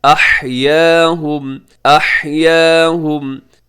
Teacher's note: ہا کا خیال رکھیے گا، اسے احیا نہیں پڑھنا بلکہ احیاہم